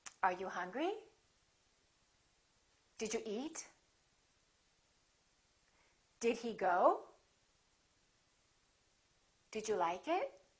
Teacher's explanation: questions which are yes-no questions. Remember, intonation goes up.